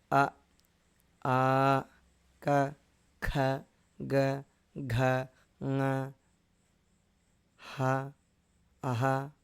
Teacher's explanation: అ క ఖ గ ఘ న హ అః ఇవన్నీ కూడా మనం గమనిస్తే కంఠం నుంచి ఉత్పన్న అవుతాయి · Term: కంఠ్యాః వర్ణాః